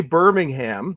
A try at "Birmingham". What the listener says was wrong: The way to say Birmingham, if you're from England, is you say the H silently. Anytime you see an H at the end, Buckingham Palace, not Buckingham Palace.